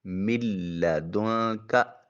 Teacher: جب نون ساکن کے بعد لام ہو تو پھر اس نون کی آواز نہیں آئے گی جب کہ نون سے پہلے والے حرف کو لام سے ملانا ہو۔ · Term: ادغام بلا غنہ